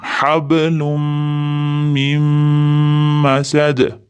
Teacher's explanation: Hablumda mimda ham, mim masadda ham ikkalasida ham g'unna